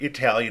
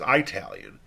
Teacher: the phonemes for the short vowel /I/ and the diphthong /ai/ sound different